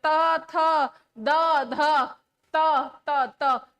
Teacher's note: जीवा का जो है स्पर्श वो आपके दांतों से हो रहा है।